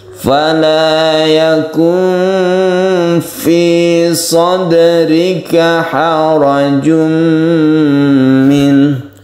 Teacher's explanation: Sadrika ada dal yang disukun, kita sebut dengan qalqalah sughra karena dia berada di tengah kata.